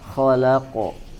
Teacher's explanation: huruf qof ya tidak ditahan dulu seperti ada tasydid kemudian juga tidak dibaca tipis ya dan harus dipantulkan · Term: Qalqalah huruf qof